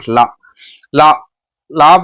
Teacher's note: நாவோட 2 பக்கங்களும் தடித்து மேல் பல்லோட அடியை தொட்டுச்சுன்னா அது லா, லகரம்.